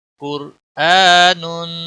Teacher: قاف موٹا پڑا جائے گا، را بھی موٹا پڑا جائے گا، کیونکہ را ساکن سے پہلے پیش یا زبر ہو تو موٹا پڑا جاتا ہے.